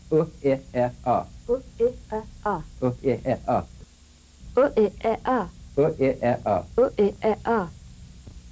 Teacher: These sounds are all short, staccato, grunt-like sounds. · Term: neutral vowels